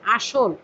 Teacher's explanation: তারপরে আসল, আসলে দন্তস্ব এর সাথে মধ্য অ যেটা তার আগে কি রয়েছে? আ, এজন্য মধ্য অ স এর সাথে যে অটা এটা ওকার হয়ে গিয়েছে